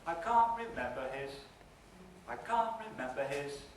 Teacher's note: this time we've got a picture where mem is lower than the syllable before it and starts a new level in the pitch contour